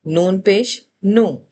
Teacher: असल मखरज अपनी जगह पे है, नून पे हमारी जबान की गुलाई ऊपर लग रही है, लेकिन पेश को प्रेजेंट करने के लिए हमारे होंठ गोल हो रहे हैं।